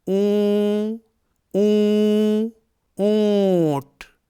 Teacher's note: اون میں آدھے نون کی آواز نکل رہی ہے · جواب: نون ساکن یا تنوین پڑھتے وقت زبان کی نوک تالو سے لگ جاتی ہے، یعنی چپک جاتی ہے، لیکن اخفا کرتے وقت زبان کی نوک تالو سے نہیں لگتی ہے اور باقی آواز ناک کی جڑ کی طرف جاتی ہے